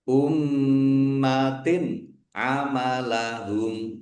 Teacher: humnya waqaf dan dibaca pendek karena tidak ada tanda panjangnya. · Kasr tanwin bertemu dengan huruf ain. Bacaan izhar dibaca jelas. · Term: bacaan idhar